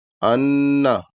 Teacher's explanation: ان نون مشدد ہے اس لیے یہاں غنہ ہوگا، ان، اتنی دیر تک آواز کو، غننے کی آواز کو ناک میں رکھنا ہے۔